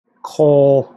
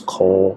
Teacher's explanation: Kol with a long o vowel becomes kol with a short o vowel